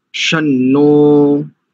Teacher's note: ये जो नकार में जो ओ का लगा ना वो दीर्घ है और दीर्घ द्वि मात्रिक होता है